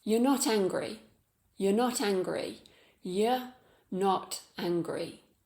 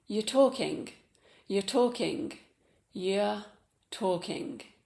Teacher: It's just a Y and a short vowel sound in the middle of the mouth.